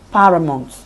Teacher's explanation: this is a pattern in which one stressed syllable is followed by two unstressed syllables